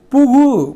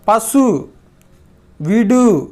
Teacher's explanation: ஓசை குறையாமல் ஒரு மாத்திரை அளவில் முழுமையாக ஒலிப்பது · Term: முற்றிய லுகரம்